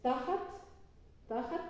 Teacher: tiene acento en la primera sílaba con una T y un pataj que es una vocal breve